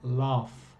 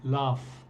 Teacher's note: El sonido final solo es el aire, laugh. No estoy usando los cordones vocales. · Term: voiceless consonants